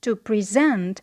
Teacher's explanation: when the word was a verb, present, to present, in the first syllable, which is not stressed, we have a short E. And in the second syllable, which is stressed, we have the vowel E.